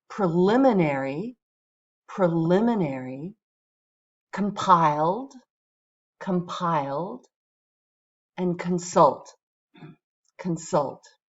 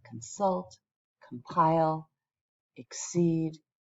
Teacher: They all have stress on the second syllable. That's common with our verbs.